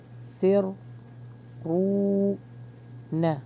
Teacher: کیونکہ سین کا ساؤنڈ ہے تو ذرا جو ہے سیٹی کے ساتھ ادا کریں گے